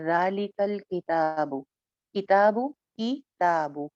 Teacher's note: ज़ालिकल का लाम की आवाज़ को नहीं चलाना, कल नहीं करना, ज़ालिकल किताबु, किताबु, किताबु।